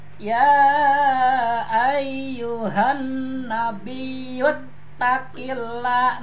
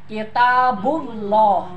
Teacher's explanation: sebelum lapa jalalah kasroh, lapa jalalah dibaca tarkik. Artinya tipis. Jadi la-nya ke arah a.